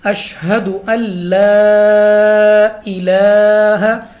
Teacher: لام کے بعد ہمارے پاس مدہ نظر آ رہے ہیں ہمیں، تو ہم نے اس کو 3 سے 4 سیکنڈ تک کھینچ کر پڑھنا ہے۔